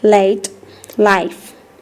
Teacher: L. It is a voiced alveolar sound.